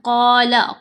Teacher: قال بل ألقوا، یہاں پر ہم نے دیکھا قال، قاف کے اوپر زبر ہے، ساتھ الف ہے، حرف مدہ ہے، تو ہم نے قاف کو 2 حرکات کی مقدار لمبا کیا مدہ حروف کی وجہ سے.